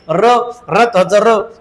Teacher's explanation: कंपित, कंप पावते जीभ. एकटाच आहे कंपित वर्ण.